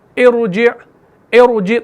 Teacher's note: تو اس را کو آپ نے موٹا پڑھنا ہے